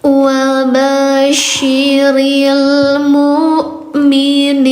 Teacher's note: I-nya empat dibacanya panjang empat harakat.